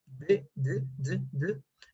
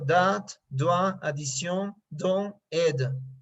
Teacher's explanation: On le forme avec la langue qui touche les dents du haut et qui se retire d'un coup, les cordes vocales vibrent et le son ne dure pas beaucoup. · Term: phonème D